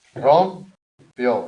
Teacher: Aguda, porque el golpe de voz cae en la última.